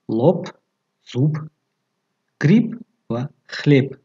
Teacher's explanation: дар охири калима б чун п талаффуз мешавад. лоб, зуб, гриб, хлеб менависем, лекин ҳангоми талаффуз лоб, зуб, гриб ва хлеб мешавад.